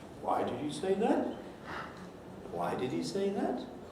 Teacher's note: when a phrase is ending with an upward trend in pitch the very last syllable has a real kick up in pitch on it